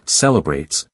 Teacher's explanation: In the word celebrates, you'll notice it's not celebrates with equal syllables, but rather celebrates where that middle vowel slips into the background and becomes softer